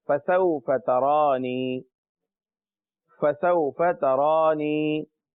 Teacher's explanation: تا کو تا رہنے دیجئے، را کو پر پڑھیں کیونکہ اس کے اوپر کھڑا زبر ہے